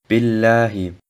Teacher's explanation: Die Lautbildung des Ba folgt, nachdem sich die Innenseite der oberen und unteren Lippe verschließen. Das Kasra vom Ba wird nur eine Sekunde gedehnt.